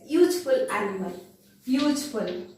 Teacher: Here U is not pronounced as a U. U is pronounced as YU. So Y is not a vowel sound.